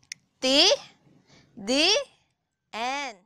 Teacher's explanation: Mula sa salitang ugat ng ngipin. Ang dulo ng dila ay dumidiit sa loob ng mga ngiping itaas. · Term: Pangngipin